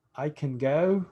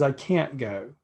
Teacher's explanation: the difference between can and can't is that can is reduced and can't is not